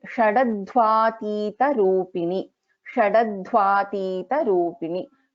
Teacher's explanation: Sha is a Shanmukha Sha, Alpa Prana Da, and Dha is a Mahaprana.